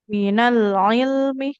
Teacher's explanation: Nah, huruf mimnya enggak boleh panjang ya.